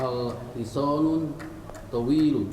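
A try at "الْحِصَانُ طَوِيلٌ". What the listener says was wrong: Ingat, kemasukan lam tidak boleh tanwin. Al Betul tadi al-hiso. Al-hisanu tawilun. Ingat ya, kalau kemasukan lam tidak boleh tanwin dibacanya.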